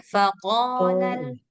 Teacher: Faqal panjang dua harakat